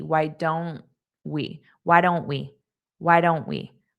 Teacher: So I just don't push out that T.